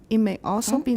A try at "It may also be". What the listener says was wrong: It. Watch the T.